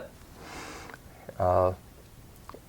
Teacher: In American English, your lips are a bit less rounded